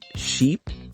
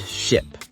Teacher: Did you notice how your mouth position changed? For sheep, E, your lips are more spread and the sound is longer. For ship, I, it's shorter and more relaxed.